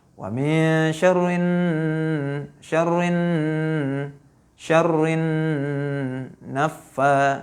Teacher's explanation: Dan nunnya di sini adalah hukumnya gunnah. Kenapa? Karena nunnya bertasydid. Jadi harus didengung.